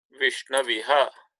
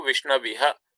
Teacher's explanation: So it becomes Vishnaviha. So O becomes Av and Ikara remains unchanged.